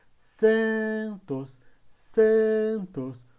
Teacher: O san é a sílaba mais forte.